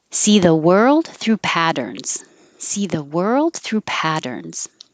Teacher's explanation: the T's change to D